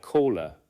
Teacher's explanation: Pronouns beginning with H, such as him, her, his, and he, may lose the H sound when unstressed.